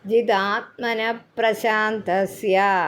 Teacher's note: ജിതാത്മന കഴിഞ്ഞൊരു വിസർഗം ഉള്ളതുകൊണ്ട് പ്ര എന്നുള്ള അക്ഷരം ഇരട്ടിച്ച് ഒന്ന് ഫോഴ്സ് കൊടുത്തു വായിക്കണം